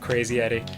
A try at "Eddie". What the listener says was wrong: Sounds like you're saying Crazy Yeti.